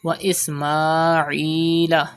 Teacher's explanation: Stretch Khada Zabar on Mim and stretch Ya Madda after Ain.